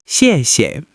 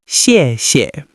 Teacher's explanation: Notice the tone. It's a fourth tone which falls sharply.